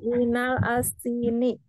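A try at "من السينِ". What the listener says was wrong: Minas sini atau minal alnya terbaca atau tidak?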